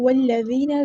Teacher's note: ذال کو نرمی سے ادا کرنا ہے اور باریک ادا کرنا ہے، اور یہاں پہ مد اصلی ہوگی